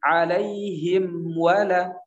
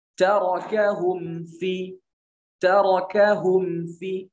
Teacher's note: Jadi huruf waw dan huruf mim juga satu makhraj, sama-sama 2 bibir.